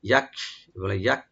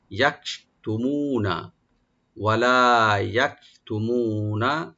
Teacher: রাখবেন, লাম একালে টানবেন ওপেন করে, ওয়ালা ইয়াকতুমুনা, ইয়া ওপেন থাকবে, কাফে একটু আমরা হামস করব, এটা হাওয়া একটু হালকা একটু চালিয়ে থাকবে